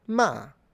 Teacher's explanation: It's a descending tone from high to low. So you can imagine you're starting from the same note that you were in when you do the ma kind of, but then you immediately drastically go down. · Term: Fourth tone